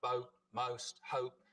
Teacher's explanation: the vowel sound in boat, most, hope starts with the tongue further forwards in the mouth. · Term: goat fronting